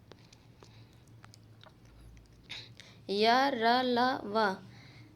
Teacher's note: व्यंजन है और अंतस्थ व्यंजन अंतस्थ व्यंजन जिन उच्चा इसका उच्चारण जीवा के कंठ ताल मूर्धा के निकट आने से होता है किंतु जीवा जो है स्पर्श नहीं करती है